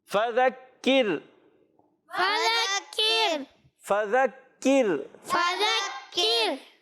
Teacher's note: کاف کو بھی باریک رکھنا ہے اور را کو بھی باریک رکھنا ہے، کیونکہ را سائن سے پہلے زیر آ رہی ہے۔